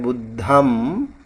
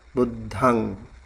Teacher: It's like a nasal sound, and you don't really close your lip